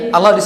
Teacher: huruf yang tebal tanpa monyongkan kedua bibir